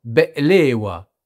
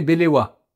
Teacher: Par exemple, et je sais que vous les adorez tous, les fameux baklawa, comme on dit à la française, mais qui se prononcent en réalité be'lewa, Il y a comme une coupure qui est gutturale aussi, et qui se fait au niveau de la gorge.